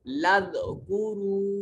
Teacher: واو ساکن ہے, ماقبل مضموم ہے, پیش والا حرف ہے, تو واو کو لمبا کریں گے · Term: حرف مدہ